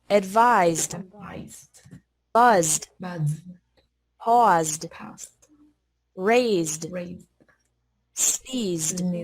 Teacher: e d is pronounced like d after verbs ending with a z sound